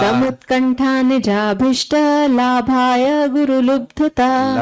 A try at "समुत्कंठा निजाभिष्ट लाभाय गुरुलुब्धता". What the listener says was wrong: लब्धता नहीं, आपने बोला नहीं, मैं बोल रहा हूँ। लब्धता नहीं है, लुब्ध।